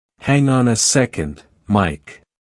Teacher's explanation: It's one unit. Say Mike with a downward tone